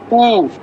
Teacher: উচ্চারণ করতে গেলে ঠোঁটটা একদম গোল করে ফেলতে হয়, একদম ঠোঁটের উপরে পুরো প্রেসারটা পড়ে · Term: ওষ্ঠবর্ণ